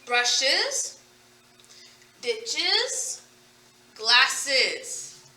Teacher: create another syllable by adding another vowel sound. It breaks up the way the word is ending.